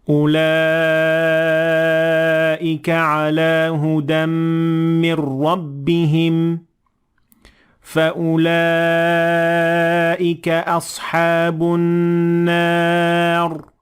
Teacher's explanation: قرآن میں جہاں بھی اولئک کا ذکر ہو وہاں مد متصل ہوتی ہے، اس لیے اسے لازماً 4 سے 5 حرکات تک کھینچا جائے گا